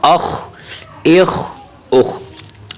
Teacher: خو کی ادائیگی حرف کو تھوڑا سا موٹا کرنا ہے